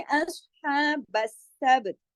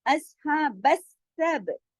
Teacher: अस हा बस सब, सब बा के ऊपर कलकला होगा